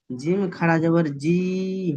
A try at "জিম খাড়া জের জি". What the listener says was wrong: খাড়া জাবার নয়, খাড়া জের।